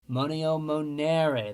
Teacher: Let me just tell you two real quick. First, second conjugation has a long and strong E in the second principal part